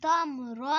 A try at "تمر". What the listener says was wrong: تم کلکلا نہیں کرنا. پڑھو تمرانی